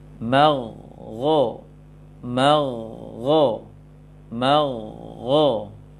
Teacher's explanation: huruf tafkhim yang sukun sebelumnya fathah, maka ambil timbangan ketebalannya selevel dengan kho fathah, atau huruf tebal, huruf tafkhim yang fathah.